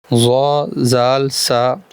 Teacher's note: जबान का सिरा और ऊपर के दांतों के अंदरूनी किनारे से अदा होते हैं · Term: हरूफ लिविया